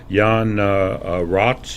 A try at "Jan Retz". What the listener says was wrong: The pronunciation should be Retz, with the A like apple, Retz.